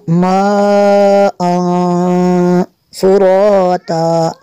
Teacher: اخفاء کا جو غنہ ہوگا وہ زبان منہ میں اپنی جگہ پہ رہے گی، اوپر تاولوں کے ساتھ نہیں چمٹے گی، ایسے غنہ کریں گے۔